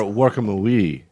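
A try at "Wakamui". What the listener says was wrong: Yeah, you just had the wrong emphasis.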